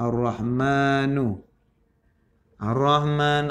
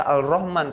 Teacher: alif lam bertemu dengan salah satu huruf Syamsiah yaitu huruf ro maka cara baca harus dimasukkan